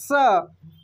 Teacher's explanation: दंत स का उच्चारण दांत से होता है। · दांत से आपके निकलेगा, हवा निकलेगा स